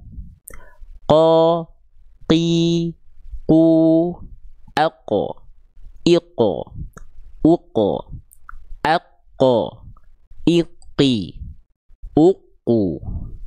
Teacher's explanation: Lihat pangkal lidahnya. Seluruhnya nempel ke langit-langit yang lunak saja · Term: huruf qof